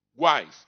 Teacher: pronunciei o u fiz bico então ele é semivogal porque se não fosse semivogal eu teria um dígrafo lembra do